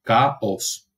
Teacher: AO no es ningún diptongo en latín, por supuesto.